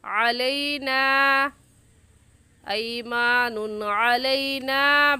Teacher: کیونکہ الف سے پہلے زبر آ گیا، تو اگر الف سے پہلے زبر آ جائے تو اسے الف مدہ کہتے ہیں، اور الف مدہ کو ایک الف کے برابر کھینچ کر پڑھتے ہیں